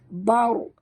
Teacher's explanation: huruf ra ini mati, huruf sebelumnya baris atas, kena baca tebal ataupun tafhim. Bar, bukan bar, tapi bar, naikkan lidah ke atas.